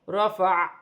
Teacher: وقف کی صورت میں زبر گر جائے گی اور عین ساکن ہو جائے گی، اور وقف کی صورت میں عین کی ہلکی سی آواز آئے گی